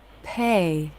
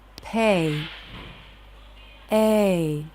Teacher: In a stressed syllable like pay, the A diphthong curves up, then down.